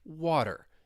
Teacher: And if you're trying to emulate the American accent, this is incredibly important, using the flap T. Words like water, you hear that soft D.